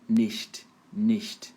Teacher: O I não é tão acentuado assim, não é ni. Você pode fazer meio que E, tipo em inglês assim